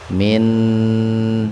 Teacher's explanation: Jadi nunnya dibaca jelas di tenggorokan. Min gitu. Ahlil idhar qamariyah. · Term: idhar khalqi